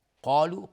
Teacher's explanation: قاف از حروف استعلاء غلیظ صرف میشه، الف هم تابع قاف غلیظ، میگیم قا نمیگیم قا.